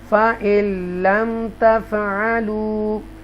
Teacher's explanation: نون ساکنہ ہے اور لام مشدہ آ رہا ہے، نون ساکنہ کو سکپ کر دیں گے